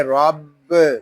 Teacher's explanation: را یہ پر پڑھا جائے گا کیونکہ را کے اوپر زبر آ رہا ہے. با یہ مشدد ہے، اس کو جماؤ کے ساتھ ادا کریں گے، اس کو رب اس طرح نہیں پڑھیں گے، اس کو پڑھیں گے رب.